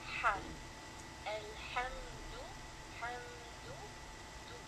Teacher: makhraj of ha comes from the middle part of the throat. The ha comes from the middle part of the throat.